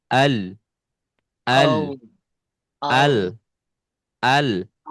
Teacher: Dia suaranya mengalir tetapi tertahan oleh lidah. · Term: sifat tawasud